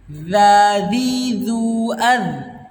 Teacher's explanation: Ujung lidah atau digigit sedikit ya, digigit sedikit ujung lidahnya lalu mengeluarkan huruf za, didorong dengan angin za dan dengan suara juga ya